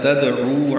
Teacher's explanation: دال ساکن پہ قلقلہ ہے ، تدعو، عین وسط حلق سے ادا کریں گے، 2 حرکات